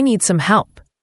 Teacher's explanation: >> That's a subtle but important detail, for I need some help. The D at the end of need is often very light, almost silent, especially before some.